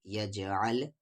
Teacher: علم، یا کو جا میں یج، آ کو لام ال، یجعل، جیم ساکن ہے یعنی یہاں پر قلقلہ ہوگا